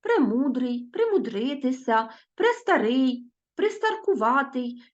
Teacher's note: них звучать ненаголошені літери е та и в префіксах так справді ми їх не чітко чуємо адже е наближено звучить до и а и наближено звучить до Е